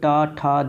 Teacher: टा ठा डा यानी कि ये मूर्धा होता है